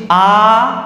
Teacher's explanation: যখন আমি বলছি আ তখন পুরোটা খুলে যাচ্ছে তাই বিবৃত